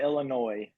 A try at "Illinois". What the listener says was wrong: no s see that's people from that aren't from Illinois you guys add the S and it's just wrong